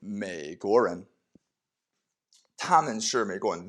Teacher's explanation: 他 们 是 美 国 人 Notice with this third tone here, remember the full third tone dips and then rises, but because it comes before a second tone, it comes before something else, then it's only half pronounced. The first half, it's just low.